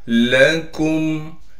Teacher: लाम को साफ करके बगैर खींचे पढ़ना है। काफ को मीम से मिलाएंगे इसलिए कि मीम साकिन है। काफ को बारीक करके पढ़ेंगे।